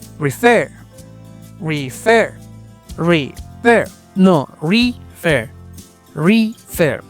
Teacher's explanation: ¿Notas la diferencia entre refer? Se nota que la tónica está la segunda, a diferencia de referir. · su sílaba tónica está en la última sílaba